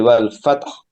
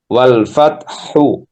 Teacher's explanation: Enggak keluar huruf H-nya karena kita ee sukunkan. Yang keluar adalah sifatnya. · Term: sifatul golbah